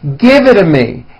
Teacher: The only big change comes from the T's being pronounced as D's. And this happens because the T's fall between two vowel sounds.